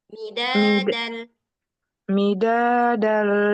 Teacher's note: midad panjang dalnya dua harakat